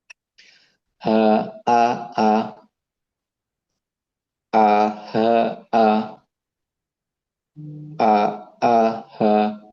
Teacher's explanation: huruf hamzah dan ha keluar dari tenggorokan bagian bawah